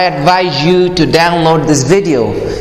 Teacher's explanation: The word advise is a verb and has a z sound at the end